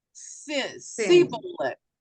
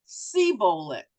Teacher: the Ephraimites had a problem saying the sh sound, the shin. They could only say samech, sibolet.